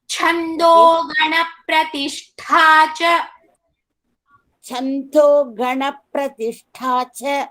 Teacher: Here cha mahaprana as well as tha also mahaprana.